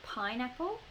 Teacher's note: i put quite a lot of stress on that first pine